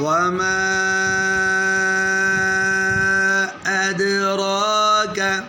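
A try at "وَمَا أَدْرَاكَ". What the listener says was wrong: آپ نے مد پوری نہیں کی.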